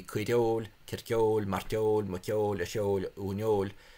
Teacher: the stress is attracted to the second syllable long vowel in Munster